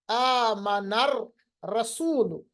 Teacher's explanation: जैसे मिसाल के तौर पर रा है, हमने यहाँ पर पढ़ा आमनर रसूल, लाम पढ़ा ही नहीं। अलिफ तो हमजतुल वसल वैसे ही गिर जाता है मगर लाम हमने पढ़ा ही नहीं। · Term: हुरूफ शमसी